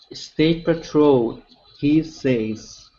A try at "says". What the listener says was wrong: Okay, so instead of say, so right now what you're pronouncing is an AE sound. Okay, you're pronouncing what's called a long A. Okay, it's not going to be a long A, it's going to be a short E. Okay, so instead of AE, it's says.